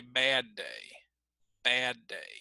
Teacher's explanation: we would probably put emphasis on the word bad. So we would say bad day, bad day.